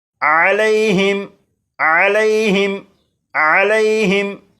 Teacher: इस लफ्ज़ के आखिर में मीम साकिन है और मीम साकिन के बाद तो है, लिहाजा इस मीम साकिन में गुन्ना नहीं करेंगे। और यहाँ पर यालीन है, इसलिए लाम को बग़ैर खींचे पढ़ेंगे